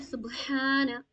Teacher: تو اس میں با میں قلقلہ کریں گے، ہم ہا کو کھینچیں گے